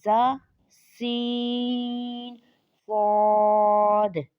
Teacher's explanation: کو ادا کرتے وقت سیٹی کی طرح تیز آواز نکلتی ہے، اس لیے ان حروف کو حروف صفیریہ یعنی سیٹی والے حروف بھی کہتے ہیں۔